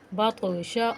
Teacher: اس کو قلقلہ کریں گے، ہلا کر پڑھیں گے، بطشا، اور شین کے حرکت غیر مدہ ہے، اس کو بغیر کھینچے جلدی سے پڑھیں گے، بطشا، سین عین زبر سع، یا زبر یا، سع یا، عین ساکن سے پہلے زبر ہے، اس کو پچھلے حرف سے ملا کر پڑھیں گے، حرکت غیر مدہ کو بغیر کھینچے پڑھیں گے۔